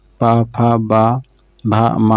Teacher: पा वर्ग में जितने आते हैं सब ओष्ठ होते हैं